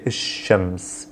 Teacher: anything typically starting with the sheen will basically skip the l sound and will double down on that first sun letter